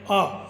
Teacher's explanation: विवर्त का मतलब मुख्य विवर पूरा खुला हुआ, जीभ निश्चेष्ट पड़ी हुई यानी कि चुपचाप पड़ी हुई, इसका कोई योगदान जैसे आ, इसमें कहीं पर भी जिह्वा हिलती भी दिखाई नहीं देती।